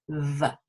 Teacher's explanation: You can keep the top lip still and just say v. So the tips of your top teeth are inside your bottom lip and touch v.